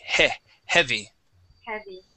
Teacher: let's use the short E. Okay. And it's not going to be a diphthong.